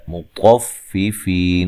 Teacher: طا کو موٹا ادا کریں گے، ٹھیک ہے؟ فی یا مدہ ہے تو وقف کی صورت میں مد کر سکتے ہیں، للمطففین، ٹھیک ہے؟